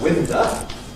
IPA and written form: ˈwɪndə (winder)